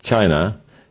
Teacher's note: the word has 2 parts, chai and na, and you will also notice that the second part is said very fast, while the first one is said more slowly